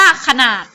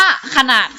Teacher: พยางค์แรกจะออกเสียงอะให้กึ่งเสียงก็คือออกเสียงแค่ครึ่งเดียวนิดเดียวนะคะส่วนพยางค์ที่สองจะออกเสียงแบบมีหอนำนะคะ